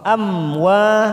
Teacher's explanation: Amwa fathah diikuti alif 2 harokat.